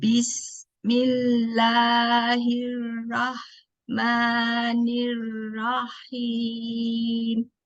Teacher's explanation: Alirkan sinnya. Sinnya ada sifat as-sofir atau desis, alir.